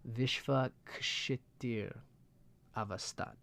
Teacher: it's a K sound and then the S with a little aspiration there